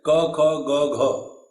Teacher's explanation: Tamilians cannot pronounce the separation ka, kha, ga, gha